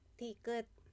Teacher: Dito, ang unang letter niya, ang first letter niya ay sounds siya ng D. Tapos sa last niya, ang sound niya ay T.